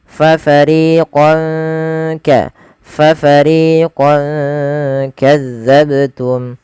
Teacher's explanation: Nah, ini ada fathatain bertemu dengan kaf, maka fathahnya fathahnya dikasih warna hijau karena ia bacaan ikhfa. Cara membacanya samarkan tanwinnya kepada huruf kaf.